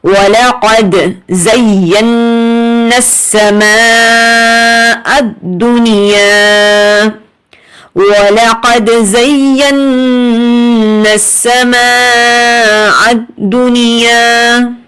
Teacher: نون مشدد ہے. 2 سیکنڈ، ٹھیک ہے، ناک میں آواز رکھیں گے